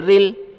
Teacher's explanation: اب را کو لام کے ساتھ ملائیں، لام کے اوپر جزم ہے، جزم ملانے کے لیے ہوتا ہے. را کے نیچے زیر ہے، را کو باریک پڑھا جائے گا، بیچ میں الف ہے، الف نہیں پڑھا جائے گا.